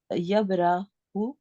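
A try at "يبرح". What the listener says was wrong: यबराहु, थोड़ा सा लंबा ना करें रा को, यबराहु।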